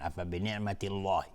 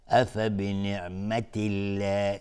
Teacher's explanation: اصلا دهان از هم باز میشه و لفظ جلاله نازک و زیبا بیرون میاد